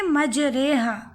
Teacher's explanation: اب 7واں قاعدہ یعنی را کو باریک پڑھنے کا، یعنی امالہ والی را باریک پڑھی جائے گی